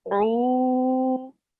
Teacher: Wau with a sakin, and before it you have a oo, just means that that is stretched for 2 seconds. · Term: Wau madda